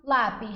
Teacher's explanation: São 2 sílabas. A sílaba mais forte é a segunda de trás para frente. Portanto, é uma paroxítona que está sendo acentuada por terminar em I seguido de S.